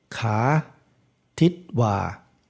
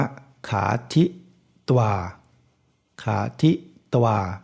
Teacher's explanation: เวลาอ่านออกเสียงมันเนี่ยก็คือออกเสียงสระอะครึ่งเดียว ครึ่งเดียวเพราะฉะนั้นถ้าเขียนภาษาไทยมันจะมียึกๆงงี้หรือสระอะเนี่ยออกเขียนครึ่งเดียวก็อ่านว่าขาทิตวาขาทิตวาไม่ใช่ว่า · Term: ตวาปัจจัย